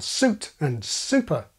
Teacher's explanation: Most of us have yod dropping in su at the beginning of a word.